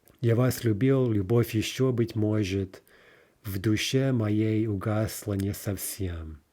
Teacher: We're clearly dealing with iambic pentameter.